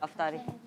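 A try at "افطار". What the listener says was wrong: इफ्तार। अफ्तार नहीं, क्या?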